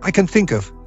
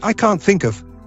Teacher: in the second case the sound of the N is much shorter and a noticeable silence occurs before the next word whereas in the first case the n Sound flows right into